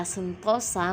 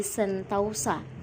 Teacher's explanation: Kata sentosa menjadi sentausa, bunyi o ke au.